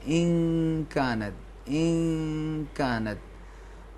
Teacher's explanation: نون کو کاف کے مخرج میں چھپائیں گے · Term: اخفا